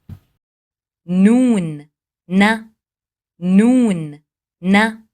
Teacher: اس کی ادائیگی زبان کے اگلے حصے کو اوپر کے سامنے والے 6 دانتوں کے مسوڑوں سے لگانا ہے، نہ کہ دانتوں کی نوک سے لگایا جائے بلکہ دانتوں کے مسوڑوں سے لگا کر اس کی ادائیگی کی جاتی ہے، جیسا کہ اس مثال سے ظاہر ہے۔